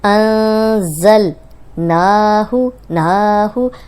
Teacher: نون پہ کھڑی زبر تھی تو اس کو تھوڑا لمبا کیا اور ہو کو لمبا ہونے سے بچا لیا